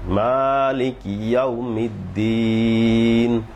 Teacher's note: মালিকি ইয়াউমিদ্দিন, শেষে 3 আলিফ টান আছে, দালে 3 আলিফ টান